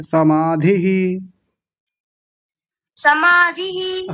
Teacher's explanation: विसर्ग को बाद में मत बोला कीजिए उस इ के साथ ही ले जाइए